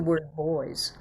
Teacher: this plural s is saying it's voiced partner with the word boys